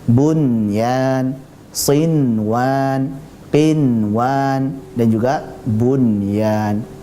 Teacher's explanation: satu kata nah ini nanti harus dibaca jelas namanya izhar mutlak para ulama menamakannya dengan izhar mutlak berarti dibaca sebagai jelas Nun sukunnya